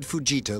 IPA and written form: fuːˈdʒiːtɑː (Fujita)